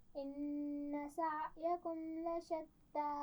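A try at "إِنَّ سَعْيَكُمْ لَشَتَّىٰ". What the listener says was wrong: دوبارہ پڑھیے، عین کے مخرج کو واضح کیجیے۔ بہت زیادہ سختی سے نہیں پڑھنا۔ ان سعیکم لشتی۔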